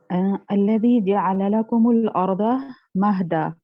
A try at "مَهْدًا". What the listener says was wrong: پہلے ہا پہ زبر پڑھ دیا تھا.